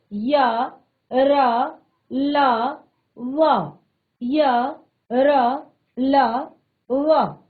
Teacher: इन व्यंजनों के उच्चारण में जीवा पूरी तरह से मुख के किसी भी भाग को टच नहीं करती, यानी कि पूरी तरह से नहीं करती। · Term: अंतस्थ व्यंजन